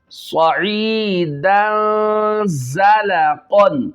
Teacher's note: صاد ہے، سٹی والا ورڈ بھی ہے یہ، اور اس کو موٹا بھی کرنا ہے، ہیلدی کر کے پڑھنا ہے.